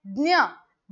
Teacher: ज्ञ म्हटल्यानंतर सुद्धा जीभ वरती चिटकती आहे